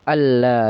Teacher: Nah, itu nun matinya tidak dianggap langsung ke lam karena dia idgham bila bila ghunah. Nun mati bertemu la itu idgam idgham bila gunah. Jadi langsung dimasukkan ke huruf la.